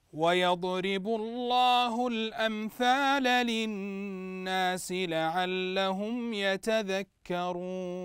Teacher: نلاحظ ان النون مشدده فتغنى بمقدار حركتين تغني بمقدار حركتين الان سنطبق ذلك ويضرب الله الامثال للناس لعلهم